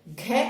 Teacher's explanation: घ कैसा है, घोष महाप्राण है,